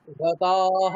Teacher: রতাহ আকার বিসর্গ আকারটা টানতে হবে।